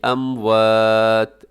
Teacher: وقف کرتے ہیں تو ہم آخر میں تا ساکن کر دیں گے